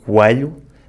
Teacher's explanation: transforming the E into a kind of closed A